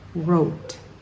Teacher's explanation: Just forget that W. Don't try to say it. It's just like it starts with an R.